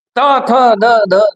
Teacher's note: आला लक्षात घ्या नंबर चार नंबर चार इथे आपले दात आहे दाताची मागची बाजू आहे मागची जी बाजू आहे ती बाजू स्पर्श करते जिभेचा सेंडा स्पर्श करतोय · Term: दंत व्यंजन